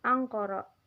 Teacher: Cara baca vokal A kedua dan ketiga sama dengan tulisan fonetiknya, yaitu O. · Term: dibaca O